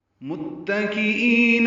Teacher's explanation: میم کو تا سے ملائیں گے، تا باریک پڑھیں گے، کاف بھی باریک پڑھیں گے، حمزہ یا کی شکل میں ہے، ای یا مدہ ہے، 2 حرکات لمبا کریں گے.